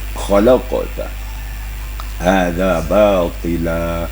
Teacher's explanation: Kha-nya itu harus ada embel-embelnya, ada getaran di tenggorokan kita. Khalaqta hadza batila, ya.